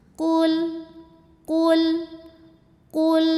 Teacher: qnya tebal pangkal lidah angkat maju